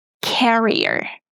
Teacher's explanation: In the word carrier, we pronounce a as in apple and we stress the first syllable, carrier.